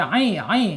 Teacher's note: Ain ain harus ada di tengah tenggorokan tuh.